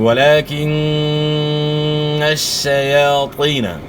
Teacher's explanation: یا ساکن سے پہلے زیر ہے، یا مد ہے، ایک الف کے مقدار کے برابر آپ نے کھینچنا ہے. تو ولیکن الشیاطین، شیاطین نہیں پڑھنا، تا کی آواز نہیں نکالنی ورنہ حرف چینج ہو جائے گا اور غلطی جو ہے نا یہاں بن جائے گی.